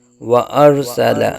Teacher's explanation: تضلیل و ارسل، و ارسل، تضلیل و ارسل علیہم طیرا ابابیل۔ و ارسل، را ساکن سے پہلے زبر را کو پر پڑا جائے گا